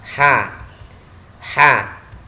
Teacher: Jadi ketika kita melafalkan huruf ha, ini suara nafas kita terlepas. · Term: hams